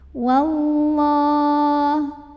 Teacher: lam jalalahnya dibaca tafkhim karena huruf sebelumnya waw berbaris fathah. Maka bacanya tebal, pangkal lidah dinaikkan.